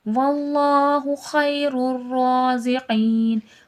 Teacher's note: اللہ لفظ سے پہلے زبر ہے، اللہ لفظ موٹا کر کے پڑھا جائے گا اور کھڑا زبر ہے، تھوڑا کھینچ کے بھی پڑھا جائے گا.